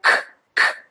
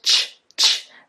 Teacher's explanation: Your tongue goes to the back of your throat, whereas with ch, ch, the tongue goes up and more to the front